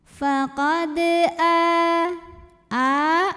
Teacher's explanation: karena ada hamzah yang dipanjangkan yang bunyinya a, i atau u, maka dipanjangkan a-nya 2 harokat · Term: mad badal